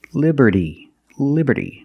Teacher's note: the T in liberty is between vowels, so it's pronounced like a fast D.